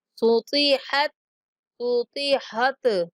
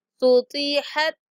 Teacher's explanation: تا جو ہے وہ حروف قلقلہ میں سے نہیں ہے تو اس کو ہم ہلا کے نہیں پڑھیں گے ، صوتی حت صوتی حت اس طرح نہیں پڑھیں گے، صوتی